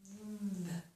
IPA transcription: ð